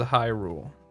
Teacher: she probably says Hyrule puts emphasis on the first syllable